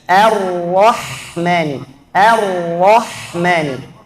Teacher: A tipis, ra tebal, ha tipis lagi. · Jangan terlalu panjangkan mimnya, bukan mani. 2 harakat saja.